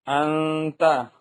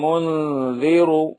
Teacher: نون کی آواز کو ناک میں چھپا کر پڑھنا چاہیے، نوک زبان تالو سے ہٹا کر، جیسے اردو میں پنکھا کے نون کو پڑھتے ہیں۔ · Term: اخفا